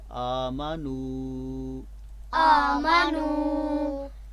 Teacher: تو اگر آپ ایسے پڑھتے ہیں آمنو آمنو تو یہ غلط ہوگا کیونکہ آگے واو مدہ ہے. تو واو مدہ کی وجہ سے ہم نے نون کی پیش کو لمبی آواز سے پڑھنا ہے.